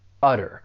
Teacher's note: the verb has 2 syllables. The stress is on that first syllable, utter. But what I'd really like to point out is that T, I am going to pronounce it as a flat T.